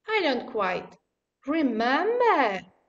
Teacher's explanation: it starts in a falling tone and goes on to the rising tone